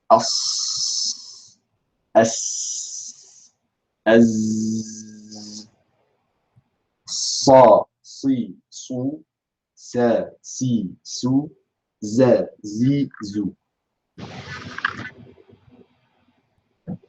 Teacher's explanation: a very particular and sharp type of hams, where the air is not just exited from the mouth, but is projected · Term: Safir